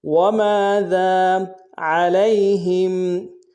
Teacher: عین کو ہرائی سے ادا کریں گے، لام کو یا کے سامنے لائیں گے، یا لین بغیر کھینچے پڑھیں گے، ہا کو میم ساکن کے سامنے لانا، غنہ کریں گے۔